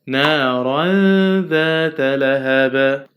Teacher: We have tanween with fath followed by dal, and dal is a light letter, belongs to a light letter, so we have a light ghunna